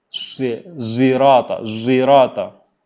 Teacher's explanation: Makhrajnya seperti shad, sa, mulutnya ke depan, sa, tapi lafadz hurufnya adalah zai. Jadi membaca dengan ismam.